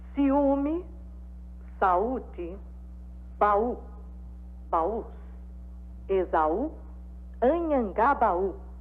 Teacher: A letra U dessas palavras é a sílaba tônica pronunciada separada da vogal que a antecede.